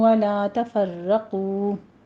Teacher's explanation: آگے پھر ولا ہے، الف مدہ ہے، 2 کاؤنٹ کیجئے، منہ کو کھول کے ادا کرنا ہے۔ تفرقو میں را تشدید والا ہے، مفخم پڑھی جائے گی، اور قو میں قوف کو پر پڑھتے ہوئے آگے واو مدہ ادا کیجئے۔